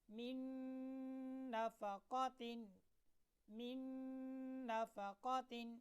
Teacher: یہاں پر نون آ رہا ہے، یعنی من نفقۃ میں نون ہے اور نون کے بعد نون آ رہا ہے، تو نون کو نون کے ساتھ ملائیں گے اور غنہ بھی ہوگا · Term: ادغام بالغنہ